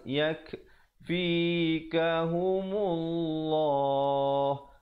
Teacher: Dan lafzul jalalah, perkataan Allah datang sebelumnya baris dhammah, iaitu baris depan dibacakan tebal